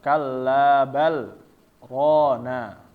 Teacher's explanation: Jadi dia dibacanya di stop dengan cara dijelaskan ya, bukan diidghamkan. Kallabal rona. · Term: saktah